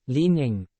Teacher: leaning is a two- syllable word with stress on the first syllable · in leaning the stress falls on the first syllable say it with me leaning leaning is a two- syllable word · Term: word stress